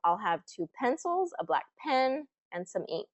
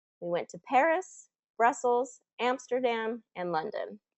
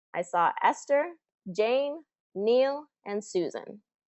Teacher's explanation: your intonation will rise on every item of the list except for the last item and then it will fall